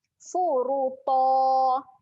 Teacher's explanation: kita nak berhenti, kita akan buangkan 1 baris. Jadi panjang 2 harakat lah.